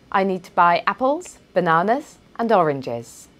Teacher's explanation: with apples and bananas my intonation rose but with oranges it fell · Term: falling intonation